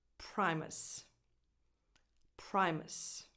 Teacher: Pry, so a diphthong, pry, and that's the strong, the defined, stressed syllable.